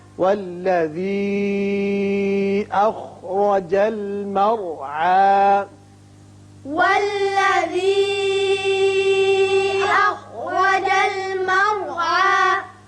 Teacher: یہ مد منفصل ہے، 3 الف کے برابر آپ نیچے کو آواز کھینچیں گے